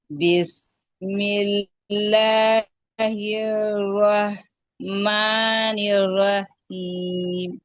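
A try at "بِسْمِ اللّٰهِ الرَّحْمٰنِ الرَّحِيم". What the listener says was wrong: देखिए जब आप वस्ते हलक दोनों एक जगह कर रही है ना, तो ये आखिर वाला आर राहीम इसको आप जहर दे रहे हैं, उसको जहर नहीं देना, ये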